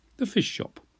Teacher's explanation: I didn't pronounce it as two separate words, fish shop, but neither did I join the two words together completely